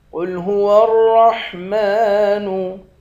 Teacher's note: قاف کو موٹا پڑھیں گے، را کو بھی موٹا پڑھیں گے، میم پر کھڑا زبر ہے، ایک الف کی مقدار کھینچ کر پڑھیں گے۔